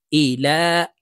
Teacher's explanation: লামের উপরে খারা জবর আছে, তাই এই লামকে ১ আলিফ টেনে পড়ব।